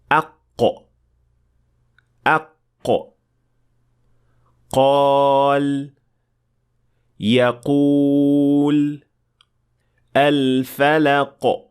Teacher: काफ की आवाज तब पैदा होती है जब जुबान का सबसे पिछला हिस्सा नरम तालू से टकराता है। यानी जुबान की जड़ और नरम तालू के दरमियान इत्तसाल होता है।